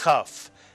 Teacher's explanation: if you take the dagesh out of the kaf, it's still a kaf, but it is pronounced chaf, the slight clearing of the throat. The same sound as the letter chet makes.